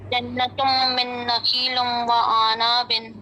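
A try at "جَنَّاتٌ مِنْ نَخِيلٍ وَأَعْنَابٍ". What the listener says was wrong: हाँ जी ठीक है, बारकल्लाह फीक।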